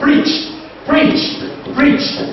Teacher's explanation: you discover that CH is what is a voiceless sound